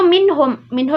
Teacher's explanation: huruf nun Nun bertemu dengan huruf H dibaca jelas tanpa didengung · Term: izhar halqi